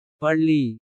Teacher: நாக்கு மேல்நோக்கி வளைந்து தடவுவதால் பிறக்கும்